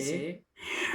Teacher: جو نکلے گا وہ حلق کے درمیان والے حصے سے ہاں نکلے گا